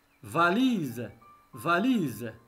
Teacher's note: Et toujours le S se prononce Z.